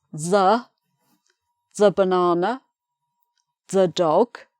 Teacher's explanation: Before a consonant you say thuh